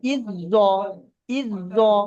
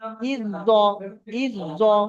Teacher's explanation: মাঝখানে জাটা বাদ, ডাইরেক্ট হামজাটা জর সঙ্গে মিলছে